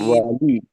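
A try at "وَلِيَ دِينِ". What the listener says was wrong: اکثر لوگ کیا پڑھتے ہیں والیا یا لیا، یعنی یہ ماضی کا سیگا، ماضی کا سیگا نہیں ہے، ولی دین، ولی دین، جی ولی دین، ولی دین، ہاں، ولی دین، ولی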